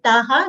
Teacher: Again, ra full letter, ta long sound followed by visarga. Visarga sound is ha, as the preceding vowel sound here is a.